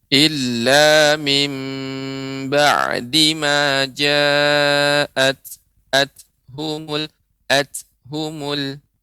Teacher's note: jadi ta ini mengeluarkan ya adanya udara ya, sedikit udara ketika mengucapkannya, sifatnya hamas